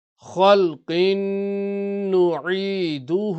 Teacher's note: kha is musta'liya, full mouth. Qaf is musta'liya, full mouth.